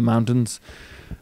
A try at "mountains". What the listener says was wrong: Why do you say mountains like that? Mountains. Mountains. You really hit that T. No, just mountains. Normal. Just do it like a normal guy. mountains.